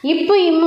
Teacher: மேலிதழும் கீழிதழும் பொருந்துவதால் பிறக்கின்றன